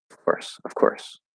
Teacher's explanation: instead of dropping a consonant and just saying the schwa sound they're changing the v to an f that's what's happening so instead of saying of they're saying f